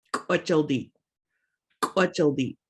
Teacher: Notice we've got that glottal stop at the end, so we're abruptly stopping that word.